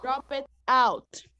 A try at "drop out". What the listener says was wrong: Drop out, não é drop it, é drop, ok?